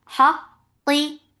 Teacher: For fatha upon jaws attached with qaf. Qaf will get sifa of shidda. The sound will cut off.